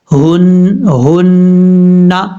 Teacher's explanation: لام زبر لا، ہا نون پیش ہن، نون زبر نا، لاہن، ہا یہ جو ہے لام کے بعد جو ہا ہے یہ ہا بھاری ساؤنڈ کے ساتھ پڑھا جائے گا، کیونکہ جس حلق سے یہ ادا ہوتی ہے اس حلق کا تعلق سینے کے ساتھ ہے، ہن، اس طریقے سے، نون کے اوپر شد ہونے کی وجہ سے غنہ کریں گے